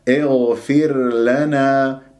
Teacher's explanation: والراء ساكنة قبلها فاء مكسور راح تكون مرققة، وهنا البعض يدغم الراء في اللام وهذا خطأ، يجب أن تظهر عندك الراء. اغفر لنا بهذه الطريقة، اغفر لنا يجب أن تظهر، هذه مهمة جدا.